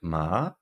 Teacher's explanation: we have a rising tone that's high like ma